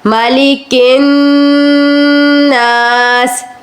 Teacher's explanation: مالکن ناس, زبر زیر حرکت کو نہیں کھینچیں گے آپ, صرف کن کے اوپر رکنا ہے اور غنہ کرنا ہے. مالکن ناس یعنی کہ آپ نے اس کو جلدی ادا نہیں کرنا, غنہ کرتے ہوئے آگے بڑھیں گے.